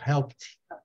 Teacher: Se ela termina em P, tem um sonzinho de um D parecendo um T